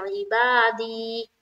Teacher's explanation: या मद्दा होगी, या मद्दा को एक अलिफ की मकदार के बाकदर खींचकर पढ़ेंगे।